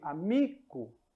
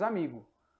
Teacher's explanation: novamente o c sofre sonorização vira G · esse som oclusivo abrupto se torna um som mais Brando amigo e o i aberto vai se tornar um e fechado